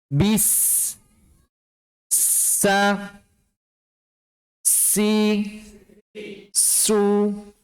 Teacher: Pastikan ujung lidah kita berada di dinding gigi seri bawah bagian dalam. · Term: huruf sin